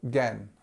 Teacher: the strength of the word is on the second syllable and the first part of the word is our famous schwar sound